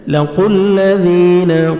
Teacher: قاف کو موٹا کر کے پڑھیں گے · ذی یا مدہ، 1 سیکنڈ آپ نے ذال کو کھینچنا ہے